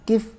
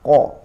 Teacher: ketika di kasroh maka dia agak ringan, tidak seberat ketika fathah.